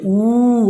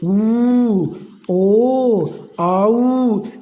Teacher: जैसे देखिए, ऊ, अपने होठ देखो गोल हो गए, ऊ, ओ, आऊ। इनको बोलने से अपने होठ जो हैं इनका आकार गोल हो जाता है, इसलिए इनको कहते हैं ओष्ठाकृति स्वर। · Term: वर्ताकार स्वर